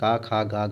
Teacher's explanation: इनका उच्चारण कंठ से होता है